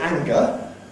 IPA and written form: ˈæŋgə (anger)